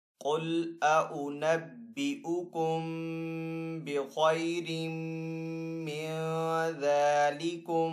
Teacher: आगे यहाँ पे नून है, नून के ऊपर जज़म का साइन है तो यहाँ पे नून साकिन है। नून साकिन के बाद जाल है, जाल हरूफ इख्फा में से है तो यहाँ पे इख्फा वाला गुन्ना करेंगे। जाल के ऊपर यहाँ पे खड़ा जबर है तो जाल को एक अलिफ 2 हरकत के बराबर खींचकर अदा करेंगे।